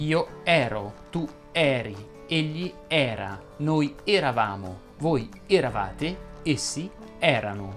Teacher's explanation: quando trovi nel indicativo imperfetto la e tonica essa deve essere pronunciata aperta